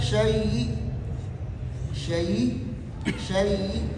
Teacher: چوتھی صورت یہ ہے کہ حمزہ کو یا کر کے یا کے یا میں ادغام کر کے پھر اس یا کے زیر کے اندر وقف بالروم کرنا، یعنی یا مشدد کے زیر کے اندر وقف بالروم کرنا